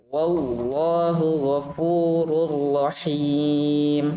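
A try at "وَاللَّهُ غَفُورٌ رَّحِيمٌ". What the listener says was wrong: Tebalkan lagi lamnya pada lafal jalal Allah.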